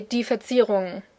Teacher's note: the ng sound in the end really just stretches out